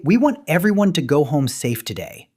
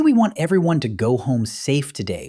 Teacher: If you say, "We want everyone to go home safe today," with a rising tone, it sounds like a question · You end every single sentence with a lower pitch than you started with. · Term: downward inflection